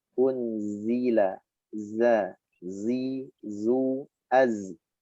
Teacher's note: Nah, adanya sifat istifal dan infitah. Istifal lidah turun, maka suara jadi tipis, tidak dibaca zo tapi za.